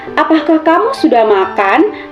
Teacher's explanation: siswa harus menekan atau menaikkan kata terakhir dari kalimat yang dia ucapkan, sehingga menimbulkan intonasi dalam pengucapan kata yang dia ucapkan tersebut.